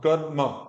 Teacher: र में अ नहीं बोलना है।